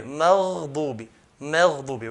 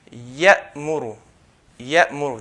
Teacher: if you notice between ghayn and the next letter, there's no gap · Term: Ar-Rakhawa